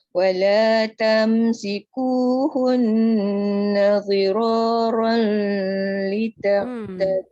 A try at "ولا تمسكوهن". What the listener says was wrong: Tak boleh tu. Wala tum bukan wala tam. Wala tumsikuhunna dhira. Dia kena jelas dot.